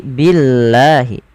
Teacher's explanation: lafal Allah bila didahului dengan huruf berharakat kasrah maka dibaca dengan tipis